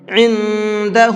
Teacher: اس نون کے اندر اخفا کر کے پڑھیں گے کیونکہ نون ساکن کے بعد میں دال ہے، اور دال اخفا کے حرفوں میں سے ہے۔